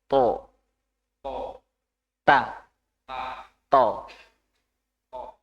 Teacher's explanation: udara tidak ada yang terperangkap di mulut jadi tidak menggelembung